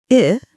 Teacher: the tongue is slightly lower than E, still toward the front. The mouth is a little more open. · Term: lax vowel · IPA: /ɪ/